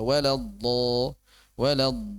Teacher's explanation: Enggak usah panjang-panjang. Ghairil maghdubi alaihim walad udah satu harakat aja.